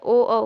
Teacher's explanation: ओ को कंठ प्लस ओष्ठ से बोला जाता है।